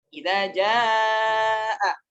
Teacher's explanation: Ini hukumnya mad wajib muttasil, dibaca panjang 4 atau 5 harakat.